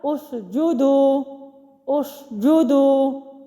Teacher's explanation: حمزہ وصلی کو میں نے ضمہ کے ساتھ پڑھا